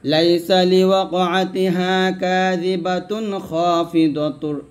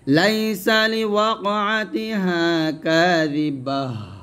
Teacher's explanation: আর থামলে কি হবে, এই তাটা হা সাকিন হয়ে যাবে